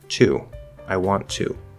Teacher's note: So when we say to, that doesn't mean it's stressed, it's just fully enunciated.